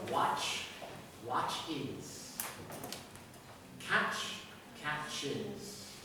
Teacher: These words, you add es. If you add es, it is going to be an is. And you're going to gain a syllable.